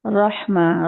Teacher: रॉ का जबर है तो ये रॉ मोटी पड़ी जाएगी